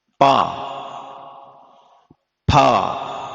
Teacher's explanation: मूर्धा स्थान है, दंत स्थान है, आदि आदि ऐसे ये वर्ग जो होते हैं, एक कोष्ठ स्थान है, जैसे पवर्ग होता है। पवर्ग का उच्चारण करोगे तो आपके ओंठ टच होंगे दोनों मिलकर के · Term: ओष्ठ स्थानीय वर्ण